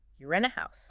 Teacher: If you're asking a yes no question like you rent a house, your voice usually goes up a bit and then down at the end